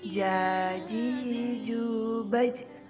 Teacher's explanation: Ketika mati suaranya mantul.